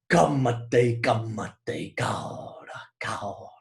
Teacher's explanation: To say the stresses, the accents come out front, and they're followed by unstressed sounds and words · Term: trochaic sound